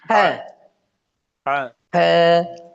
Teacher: হা চাপাইয়া, হ্যাঁ, কণ্ঠের মাঝখানে চাপিয়ে